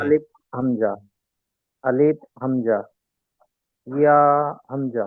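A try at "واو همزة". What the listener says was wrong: ইয়া না, ওয়াও ওয়াও, ওয়াও হামজা।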